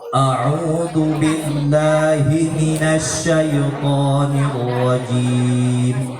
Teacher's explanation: Ingat ya, hamzah sama ainnya itu tidak bersatu. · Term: makhraj ain